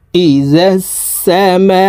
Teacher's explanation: إذا السماء সিনের উপরে তাসদিদ আছে, তাসদিদওয়ালা হরফ দুইবার উচ্চারণ করিয়া পড়িতে হয়। একবার পূর্বের হরকতের সঙ্গে আরেকবার নিজ হরকতের উচ্চারণ হবে।